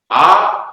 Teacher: మాత్రలు, అంటే రెండు మాత్రలు అంటే రెప్పపాట్లు లేదా రెండు చిటికెలు. ఇలా రెండు చిటికెలు వేస్తే ఎంత సమయం పడుతుందో అంత సమయంలోనే దాన్ని ధరించాలి, మనం ఉచ్చరించాలి, పలకాలి. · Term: దీర్ఘాక్షరం